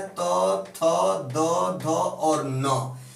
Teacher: जब इनको बोला जाता है तो जीभ हमारी जो होती है वो दांत से टकराती है और वायु भी मुंह के अंदर से आके दांत से टकराती है, अर्थात उच्चारण स्थल या स्थान क्या है, तो दांत है हमारा टेथ। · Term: दंत्य वर्ण